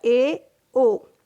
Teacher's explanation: जिन स्वरों के उच्चारण में मुख द्वार संव्रत की तुलना से अधिक खुलता है, क्या कहलाता है, अर्ध संव्रत कहलाता है।